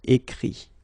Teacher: phonetically this final T doesn't exist. Okay? So the sound will be only this I, écrit.